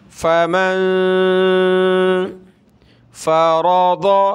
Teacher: نون ساکن ہے، ناک میں آواز پیدا کریں گے، یہ میم ہے، اس کو نون کے ساتھ ملانا ہے، میم نون زبر من۔